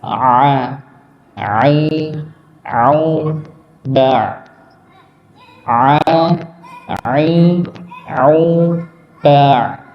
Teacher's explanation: hurf Ain tempatnya ditenggorokkan bagian tengah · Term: huruf Ain